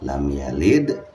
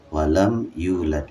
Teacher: Kalau yang lam yalid memantulnya kecil atau tipis, walam yulad memantulnya besar. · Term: qalqalah